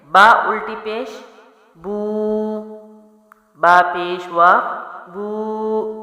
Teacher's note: الٹے پیش کی ایک الف لمبا کرتے ہیں